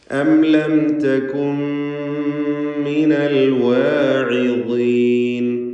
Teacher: സാക്കിനത്തായ നൂൻ പൂർണ്ണമായും ശേഷമുള്ള മീമിൽ ലയിപ്പിച്ച് ഇദ്ഗാം ബിഗുന്ന കാമിൽ നൽകിക്കൊണ്ട് മണിച്ചുകൊണ്ടാണ് ഉച്ചരിക്കേണ്ടത്.